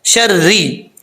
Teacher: را کے نیچے زیر ہے، را بریک پڑھا جائے گا